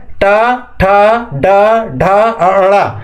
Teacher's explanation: इसको भी समझ लीजिए मतलब तालू से थोड़ा आगे मुंह में तालू से थोड़ा आगे और दांत से थोड़ा पीछे ऊपर की ओर जीभ हमारी जाता है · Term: मुर्धा, मूर्धा